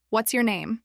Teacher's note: With falling intonation sounds direct, confident, and neutral.